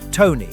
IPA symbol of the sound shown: t